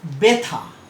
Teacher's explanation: দেখো বতে একটা শ্বাসাঘাত পড়ছে, সাধারণত ব আমরা যেভাবে বলি সেভাবে বলছি না, এটাতে বতে একটা আঘাত দিচ্ছি। ঠিক আছে, প্রথম উচ্চারণের মধ্যে একটা প্রস্বর যুক্ত হচ্ছে, একটা সামান্য শ্বাসাঘাত পড়ছে। · আদ্য বর্ণে জফলা যুক্ত হলে সংযুক্ত ব্যঞ্জনটি উচ্চারণে সামান্য শ্বাসাঘাত পড়ে এবং বর্ণটির উচ্চারণ একারান্ত হয়